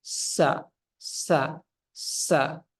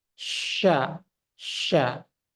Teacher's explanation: kalau kita hilangkan sifat tafasyi ini akan mirip seperti Sin